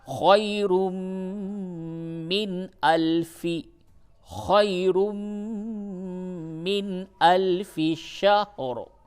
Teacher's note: تنوین کے بعد میم آیا، اس جگہ پہ ادغام مع الغنہ ہوگا